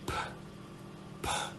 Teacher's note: the p sound, it's unvoiced. You can't feel any vibration.